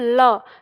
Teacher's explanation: ल जब हम बोलते हैं तो हमारी जीभ मुड़ के दंतमूल के पास होती है और जो हवा है वो जीभ के दोनों ओर से निकलती है, उसके पास से गुजरती है, तो आप इसे कह सकते हो कि ये पार्श्विक वर्ण कहलाता है।